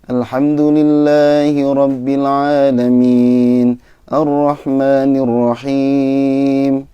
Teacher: nada naiknya nahwan asli itu lebih ke datar. Alhamdulillahi rabbil alamin Ar-Rahmanir-Rahim, lebih ke datar ya.